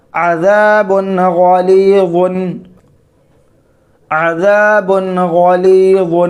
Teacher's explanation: کتابن حکیمن، عین زبر آ، ذال الف زبر دا، عذا با دو پیش بن، عذابن، عذابن، غین زبر غا، لام یا زیر لی، غلی، وا دو پیش ون، غلیظن، غلیظن، عذاب غلیظ، عذاب غلیظ، بعد و پیش بن ہے، تنوین ہے، تنوین کے بعد غین حروف حلقی میں سے ہے، تنوین کی آواز کو ظاہر کر کے بلا غنہ کے جلد پڑھیں گے